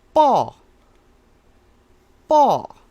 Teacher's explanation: it's a high falling um pronunciation this is ball ball ball see how it goes high and low